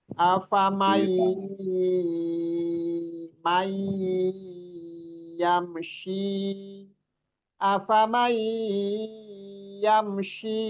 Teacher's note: Idgham itu artinya memasukkan huruf ya, memasukkan huruf nun ke ya. Bihunnah dengan dengungan. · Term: Idgham birunna